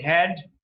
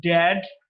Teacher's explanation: Second criteria was the place of articulation, the tip of the tongue touches the alveolar, and the manner of articulation was plosive. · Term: Voiced alveolar plosive